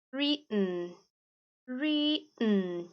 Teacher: Em algumas regiões você também vai sumir com esse TT aí, tá? Em alguns países ou regiões daqueles países, você engole o TT. Isso acontece muito no inglês britânico, em algumas regiões de Londres, por exemplo.